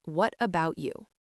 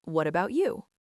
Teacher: To make it friendly, your voice needs to lift slightly at the end.